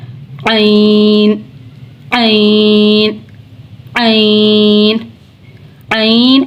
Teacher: वस्त हलक यानी हलक का दरमियान वाला हिस्सा